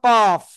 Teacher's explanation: জিব্বার গোড়া তার বরাবর উপরে তালুর সাথে লাগিয়ে